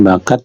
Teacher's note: The word bakat is pronounced with a glottal stop in the end.